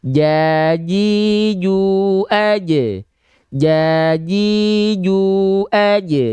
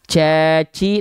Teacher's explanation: dia enggak akan mengeluarkan percikan nafas karena nempel Tengah lidahnya ke langit-langit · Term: huruf Jim, huruf jim